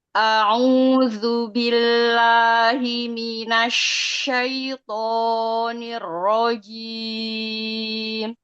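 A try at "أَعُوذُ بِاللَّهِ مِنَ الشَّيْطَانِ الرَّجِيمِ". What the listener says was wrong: Kepanjangan tonya itu syaiton.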